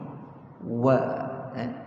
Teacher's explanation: Huruf yang makhraj dia kena dua bibir mulut kita muncung. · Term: huruf waw